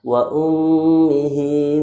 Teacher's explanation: Di sini ada mim bertasydid. Mim bertasydid hukumnya gunnah, ditahan 2 harakat.